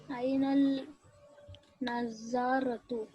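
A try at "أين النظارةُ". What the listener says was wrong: Ainan nadaratu. Okay, so with few letters like the noon, the lam also will get skipped. Will become Ainan nadaratu.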